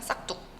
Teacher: 기역 받침 뒤에 당연히 자연스럽게 이 디귿이 된소리로 되는 그런 현상이에요